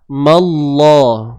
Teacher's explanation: kalimah Allah ini dibaca dengan tebal disebabkan sebelumnya terdapat huruf yang berbaris atas